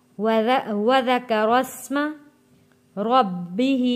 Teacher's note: را کو موٹا پڑھیں گے اور را کو جوڑیں گے سین کے ساتھ